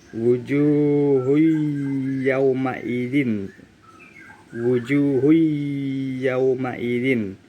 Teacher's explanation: Dhammah tanwin bertemu dengan huruf ya, maka dibaca lebur. Wujuhui yauma idzin, bukan wujuhun yau, itu salah. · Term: idgham bi gunnah